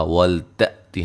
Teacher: حمزہ کو جھٹکے سے ادا کریں گے